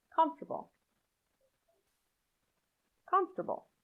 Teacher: The OR after F could be pronounced with a schwa sound, comfortable. But it often isn't pronounced at all. You link directly from the F to the T